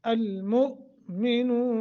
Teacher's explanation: افلحل حل مؤمنون، مؤ یہاں آگے حمزہ ہے، حمزہ جھٹکے ساکن ہے، جھٹکا دے کر پڑھیں گے